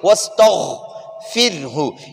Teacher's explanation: غین موٹا غین ہے، نقطے والا غین ہے، اس کو پر پڑھیں گے